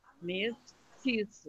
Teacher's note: Mestiço, mestiço. Então, a sílaba forte é no meio, na penúltima